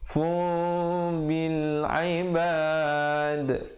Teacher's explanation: Tapi bila datang ba, huruf iqlab dibacakan dengan menukar daripada bunyi nun kepada bunyi mim yang nipis. Daripada fun jadi fu. · Daripada fun jadi fu. Bibir sekadar macam bersentuhan begitu saja, very light mim, ya. Mim yang ringan.